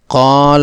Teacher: قال میں الف اپنے سے پہلے کاف کی زبر کی وجہ سے حرف مدہ ہے، مد طبعی ہونے کی بنیاد پر اس کی مقدار 2 حرکات کی ہوگی۔ اس کا درست لفظ قال ہے، اس الف کی مقدار کو کم کرتے ہوئے اسے قال پڑھنا غلط ہے۔